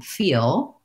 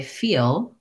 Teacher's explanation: For example, in words like feel, you can hear it sounds like I'm saying an L and I didn't touch up. When I say feel with an L where my tongue touches at the end, you definitely hear that it's an L.